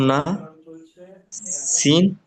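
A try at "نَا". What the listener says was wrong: এই দেখ, নুসি কেন বললেন? নুন আলিফ জবর কি বললেন? হ্যাঁ তো নুন আলিফ যখন যদি আপনি না বলেন, তাহলে পড়ার সময় নু কেন পড়ছেন?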